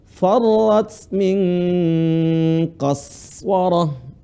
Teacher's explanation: Silakan huruf sin, lihat. Sekali lagi dialirin suaranya, bukan qalqalah